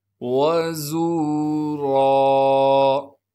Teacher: وَزُورًا، واو کو بغیر کھینچے پڑھنا ہے، زا کو سختی سے ادا کریں گے، زا کے بعد واو مدہ ہونے کی وجہ سے زا کو ایک الف کے مقدار کھینچیں گے، را پر دو زبر آنے سے جب را پر وقف کریں گے پھر را کو ایک الف کے مقدار کھینچیں گے اور را کو موٹا کر کے پڑھیں گے